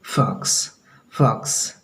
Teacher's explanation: फॉक्स पूरा जोर से होंठ को सटाना नहीं है, बल्कि फॉक्स, फॉक्स, फॉक्स, ठीक है। फैट, फैट, हवा निकालनी है, हल्का सा होंठ को सटाना है, पूरा सटा करके फ नहीं बोलना है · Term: एफ